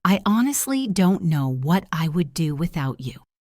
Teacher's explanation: Notice how I stressed the word honestly and the word without. I did not say I honestly do not know.